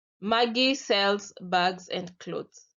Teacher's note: at the end my voice uh goes down · you can see that at the end, my voice goes down. That is falling intonation.